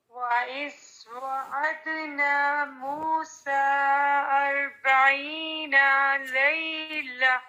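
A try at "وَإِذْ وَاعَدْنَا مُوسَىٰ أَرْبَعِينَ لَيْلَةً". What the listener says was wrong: یہ جو وعدنا ہے نا، الف مدہ، یہ آپ کا ڈراپ ہو رہا ہے، اس کو انڈر لائن کریں. 40 نون کی زبر ہے، فتحہ ہے، اس کو بھی انڈر لائن کریں، یہ لمبی نہیں ہوگی.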